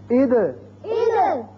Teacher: دال پر جزم جب آئی تو یہ دال کے متعلق آپ نے پڑھا، یہ حروف قلقلہ میں سے ہے، اس کی 2 آوازیں نکلیں گی